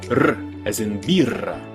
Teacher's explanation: your tongue will go right up against your alveolar ridge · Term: trilled R